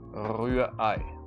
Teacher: The R in German is pronounced in the back of the throat. Rührei. Now, the second R in this word, the R, is almost not pronounced.